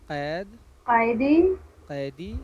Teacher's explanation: قاف بالکل حلق سے نکال کر پڑھیے گا